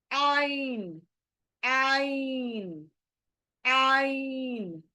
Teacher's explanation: इसका एग्जिट हलक के अंदर है हलक के बीच में है जहां से हमने जहां से हमने ह निकाला था यह बारीक